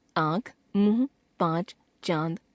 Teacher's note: हवा नाक और मुख दोनों से निकलती है